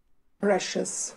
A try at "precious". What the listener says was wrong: Yeah, good.